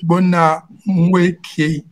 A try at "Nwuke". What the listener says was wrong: Nweke. Nweke. No, just make this N silent. Pronounce W-U-K-E. That's Nweke. Nweke.